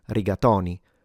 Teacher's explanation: there are a lot of people in Italy that do pronounce it with an open o and say riatoni.